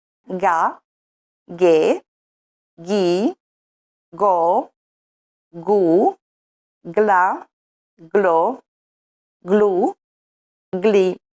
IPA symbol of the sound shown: g